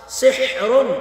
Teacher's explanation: حا کو حلق سے ادا کریں گے